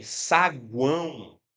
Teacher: Então, perceba que em saguão o U é a semivogal. Aí o som sobe para a vogal ã e desce para semivogal.